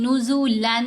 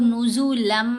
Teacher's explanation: लाम मुशद्द के ऊपर और रा मुशद्द के ऊपर जब हमने इदगाम करना है तो साथ गुना नहीं करना लेकिन ये जो बाकी हरूफ है मीम नून वाव और या इनके ऊपर जब इदगाम होगा तो फिर साथ गुना भी होगा तो यहां हमने मीम के ऊपर इदगाम किया तो गुना किया साथ